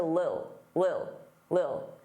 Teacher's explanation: Now notice I didn't say little, I said lil, lil. Native speakers often take the word little and reduce it to lil